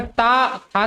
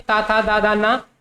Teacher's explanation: ये ता वर्ग के हैं और इनका उच्चारण स्थान दंत है।